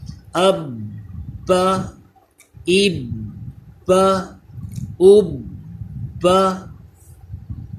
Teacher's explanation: پہلے حمزہ کی آواز پھر عین کی آواز آنی چاہیے، پہلے حمزہ پھر عین کی، اسی طرح خا حروف مستعلیہ آ گیا، اسے پر پڑھیں گے، اخ اخ اخ۔ با یہ آپ جانتے ہیں حروف قلقلہ میں آتا ہے، تو اس پہ جماؤں کے ساتھ قلقلہ کریں،